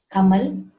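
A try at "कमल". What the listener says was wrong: Kamala, not Kamal. Kamala. It is La. So like Hindi, we should not cut the last vowel. It should be pronounced as it is.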